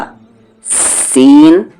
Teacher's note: सीन सीटी की आवाज होगी